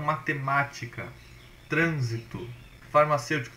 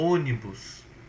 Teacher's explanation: mais forte assim tão matemática trânsito farmacêutico tudo isso o ônibus todas as palavras que forem proparoxítonas ou seja antepenúltima é mais forte